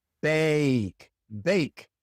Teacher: In bake, the A has the long sound A, but it's actually two sounds A. Bake.